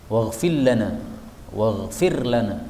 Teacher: Ini ra-nya hilang, masuk pada lam. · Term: idgham